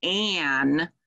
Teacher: when you co-articulate the ah and the um it sort of pulls ah into your nose and nasalizes it so you have that um instead of on so that's why · So when we have a word like an, when you see an A, you would expect a, but that nasal sound, when you co-articulate the a and the n, it sort of pulls a into your nose and nasalizes it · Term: glued sounds